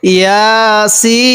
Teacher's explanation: ইয়া এর মধ্যে এক আলিফ টান দিব, সিনের মধ্যে আমরা চার আলিফ টান দিব।